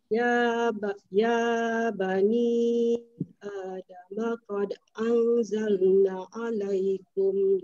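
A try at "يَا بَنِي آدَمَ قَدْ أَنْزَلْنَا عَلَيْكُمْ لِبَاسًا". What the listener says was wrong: Yang na itu panjang kan? Anzalna. Ada alif kan? Anzalna.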